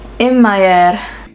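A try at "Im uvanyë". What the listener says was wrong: Im uvayer. Remember the u?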